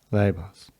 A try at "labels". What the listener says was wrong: That's not the same sound you gave me a second ago. Balls. Labels. Kind of tightening up a little bit when you put it in a word. So again, balls. Labels. Balls. Labels. Balls. Labels. Labels. Balls. Labels. Balls. Labels.